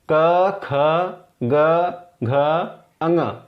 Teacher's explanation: आप बोलिए तो जैसे गले से आवाज आ रही है, हवा का रुकावट गले में हो रहा है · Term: कंठ